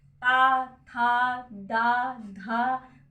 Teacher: सब में जीवा जो है दांत को स्पर्श करे, इसलिए ये दंत है